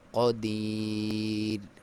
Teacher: یہاں پہ را پہ کیونکہ وقف کر رہے ہیں تو را کو باریک پڑھیں گے ، کیونکہ اس سے پہلے لفظ پہ جو حرکت والا متحرک